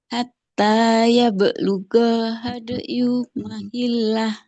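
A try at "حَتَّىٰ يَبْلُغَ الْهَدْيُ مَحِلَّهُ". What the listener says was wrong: Masih panjang hadayunya. Ya belughal. Coba Ibu. Ya belughal.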